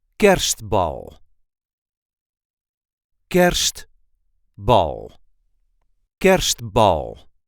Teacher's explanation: The emphasis is on the first syllable.